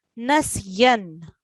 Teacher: So whenever a letter carries a tanween, so we join the letter with noon. So we have a ya. Ya carries a tanween. So we join the ya with noon.